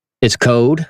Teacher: I don't pronounce my L's